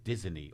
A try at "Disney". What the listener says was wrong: Disney. you put an extra E. That's not grammar. It's just a pronunciation.